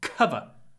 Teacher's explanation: we need a lot of aspiration